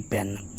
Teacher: ਪੰਜਾਬੀ ਵਿੱਚ ਐ ਦਾ ਬਲਯੁਕਤ ਉਚਾਰਨ ਵੀ ਮਿਲਦਾ ਹੈ ਖਾਸ ਕਰਕੇ ਅੰਗਰੇਜ਼ੀ ਤੋਂ ਆਏ ਸ਼ਬਦਾਂ ਵਿੱਚ